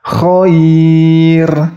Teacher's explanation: Ini misalnya contohnya khair. Jadi ro-nya dibaca sukun. Khair. Jadi tidak boleh dibaca tebal. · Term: ro taqiq